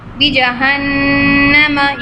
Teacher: you can see noon mushaddad again with gunna.